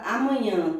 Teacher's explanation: A palavra amanhã tem a última sílaba mais forte, por isso ela é uma palavra oxítona